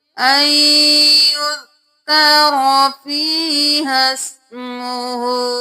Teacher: ہا کو سین کے ساتھ ملائیں گے، الف کو چھوڑ دیں گے، اس الف کو بھی چھوڑ دیں گے.